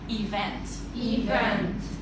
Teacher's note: the stress on the second syllable